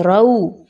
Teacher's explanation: بہت سے لوگ یہاں پہ پڑھتے ہیں رو نہیں پڑھنا آپ نے، را واو زبر رو، اچھے سے اس کو ڈیپ ڈاؤن گول کیجئے